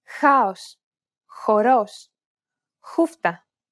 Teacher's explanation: Blow a steady stream of air between your tongue and the back part of your mouth. You should hear a turbulent sound.